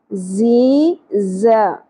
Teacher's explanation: زا شدت کے ساتھ سیٹی کے ساتھ